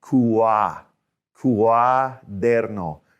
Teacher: So we're going oo and then ah.